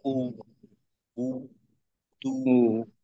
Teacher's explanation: পেশের উচ্চারণের ক্ষেত্রে দুই ঠোঁট একেবারে গোল করে তারপর পেশের উচ্চারণটা হবে